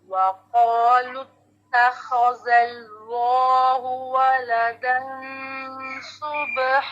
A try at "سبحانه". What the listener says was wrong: نہ لمبا ہو جاتا ہے، اس سے نون کی زبر ایسے کھچاؤ میں آتی ہے، نہ ایسے پڑھیں.